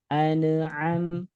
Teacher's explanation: an'am itu ada sifat tawasudnya. Jangan sampai annya mantul.